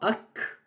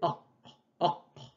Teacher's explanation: Cherchez le son au fond de la gorge.